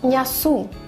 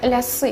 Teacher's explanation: гэтае я, яно не скарачаецца фактычна ў сваім гучанні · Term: яканне